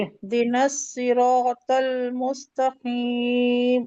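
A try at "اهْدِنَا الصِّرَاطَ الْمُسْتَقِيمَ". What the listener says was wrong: हाँ, सिरातुल, तो हैवी है ये। तुल, मुस मुस्तकीम नहीं है, मुस्तकीम नहीं। आप तो इसमें आपने इसको तो जल्दी कर दिया, सीधा कर दिया। ये सीन है ना, सीन, ये कौन सा है?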